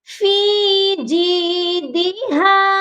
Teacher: ایک بار پھر سے پڑھتے ہیں، حمالۃ الحطب فی جیدہا، یہاں پر ہا کی آواز سینے سے آئے گی اور فی کو ہم نے ایک الف کے برابر لمبا کرنا ہے، یہاں پر یائے مدہ ہے